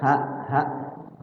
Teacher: kalau hak itu hak yang besar, ada istilah hak besar itu. Keluarnya dari tenggorokan paling bawah.